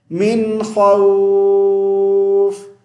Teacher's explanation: خا کو لمبا کھینچیں گے, لاسٹ میں دو حرف ساکن جمع ہو گئے